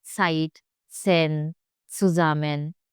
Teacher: It's always ts, ts, TS together. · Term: German Z